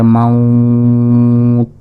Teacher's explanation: আর যদি আমরা এখানে ওয়াকফ করি তাহলে মাউত। কারণটি হলো জবরের বামে ওয়াও সাকিন এবং তারপরে অক্ষরে ওয়াকফ করলে 3 আলিফ পরিমাণ টেনে পড়াকে মধ্যে লিন বলে। তাহলে মাউত।